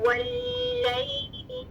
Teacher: लाम मुशद्दद में पहला लाम साकिन तवस्सुत है, थोड़ी सी आवाज चल रही है। वल्लैल के दरमियान में या लीन है, दो लीन लेटर्स, ठीक है, वाव लीन और या लीन, दोनों साकिन, दोनों से पहले फतहा, ठीक है, और दोनों नरमी से अदा होंगे।